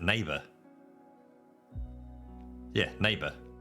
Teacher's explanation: There is no or in there, it's just ah. It's literally dropping OUR for the letter A. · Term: New Zealand pronunciation